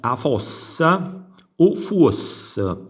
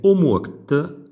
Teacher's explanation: Poi abbiamo la metafonia, il cambio di suono O in UO